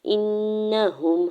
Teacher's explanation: حمزہ کی زیر کو نون مشدد کے ساتھ ملاتے ہوئے غنہ کرنا ہے